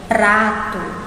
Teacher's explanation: quando a gente tem o r né entre uma consoante + vogal a língua da gente treme quando vai falar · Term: uma tremidinha